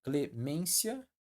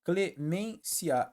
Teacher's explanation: Aqui ela fica na tradição, clemência, paroxítona terminada em ditongo. E aqui, ó, clemência, ela fica na modernidade, ou seja, proparoxítona eventual, formando um hiato no fim.